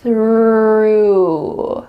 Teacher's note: Your tongue is coming out between your teeth, and there's some air. That's a wonderful TH sound. Through. It sounds like I threw the ball.